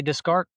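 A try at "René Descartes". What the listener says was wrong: I think the S is also silent. Descartes. It's not Descartes. Descartes.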